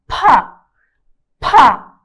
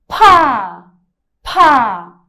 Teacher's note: P do inglês mais uma vez é uma consoante aspirada